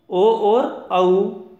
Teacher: कंठ और ओष्ठ इन दोनों की सहायता से उच्चरित वर्ण है ओ और औ। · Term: कंठोष्ठम